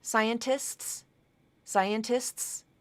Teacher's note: the STS ending so similar to the SKS ending here STS you can drop that middle T